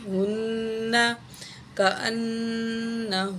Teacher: یہاں پہ دو نون ہیں تو دو دفعہ غنہ کریں گے